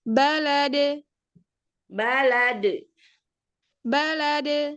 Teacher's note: Jangan melemah karena ini qalqalah kubro di waqaf. Jadi makin kuat.